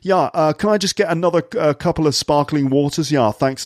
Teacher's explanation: a posh guy in a pub ordering some drinks and intentionally dropping his T's just to sound cool